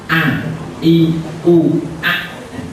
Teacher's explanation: makhrajnya Hamzah ini adalah pangkal tenggorokan